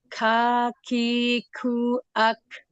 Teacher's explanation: pangkal lidah keluar dan menempel di langit-langit yang antara yang keras dan lunak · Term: huruf kaf